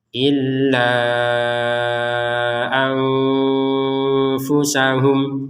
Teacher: Kata illa di sini ada harokat bendera, kita panjangkan 4 atau 5 harokat. Ya, lebih amannya 5 harokat.